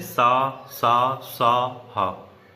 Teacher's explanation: इनके उच्चारण के समय वायु मुख में रगड़ खा करके ऊष्मा पैदा करती है, या फिर गर्म वायु हमारे मुख से निकलती है, उन्हें ऊष्म व्यंजन कहते हैं।